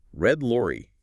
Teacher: Lips are usually a bit rounder for R, more neutral for L. · Focus on how your tongue moves from the R position, no contact to the L position, contact.